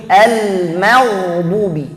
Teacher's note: Banyak yang baca al maghdubi, salah. Ya, al mim tipis, ghainnya tebal. Gak boleh dua-duanya tebal, gak boleh dua-duanya tipis. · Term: ghain tebal